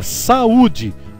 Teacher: as vogais elas se encontram em sílabas diferentes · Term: iato